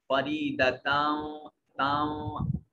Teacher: यहाँ तनवीन, ता के ऊपर तनवीन है और यरमलून में से वाव है, ता को वाव के साथ मिलाकर पढ़ेंगे, और यरमलून में से वाव है तो इदगाम गुन्ने के साथ होगा, यानी आवाज को नाक के नथने में ले जाकर गुनगुनाएंगे